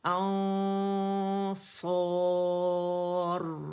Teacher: کاملہ grade کا 2 count کا غنہ ہوگا